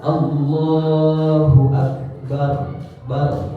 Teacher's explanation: Yang tadinya bar, kan itu si lidah belakang kan tidak kemana-mana. Tapi ketika ditebalkan jadi tafkhim, maka si ra ini ketika nyebut ra, lidahnya, lidah belakang pangkal lidah itu dikeataskan ke langit-langit. Jadi ditempelkan itbaq itu atau ditegangkan.